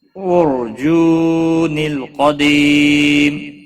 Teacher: را ساکن سے پہلے پیش ہے اس لیے را ساکن پور پڑھا جائے گا